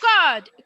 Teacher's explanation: কার্ডের আরটা কিন্তু আমার গলার মধ্যেই থাকবে, এটা কিন্তু গলার থেকে বার হবে না, কার্ড ভেতরেই থাকবে।